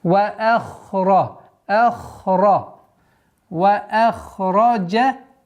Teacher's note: Ха и ра твердые звуки